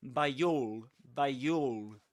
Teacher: you can link the word by to the next word with this sound with this y sound